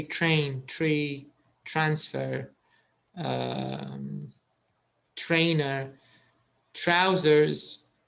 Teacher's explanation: all of them have the ch sound even though there's no ch it's just a t and an r but it's a ch sound there's a bit of a ch